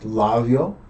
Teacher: it would have been pronounced like a B, but you don't fully close your lips. It's called a labial fricative. So, it's not an English sound.